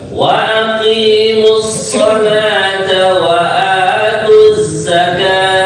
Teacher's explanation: jangan lupa deh za pada kalimat wa'atuz. Nah, ini seperti suara lebah itu gitu ya.